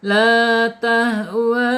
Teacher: Munfasil terpisah [berdehem] ya antara mad tabi'i dan alifnya terpisah ya. Namanya mad jaiz munfasil panjang 4 sampai 5 harakat.